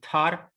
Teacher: and tar this is aspirated t